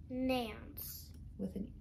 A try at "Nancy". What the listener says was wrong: With a Y at the end. Nancy.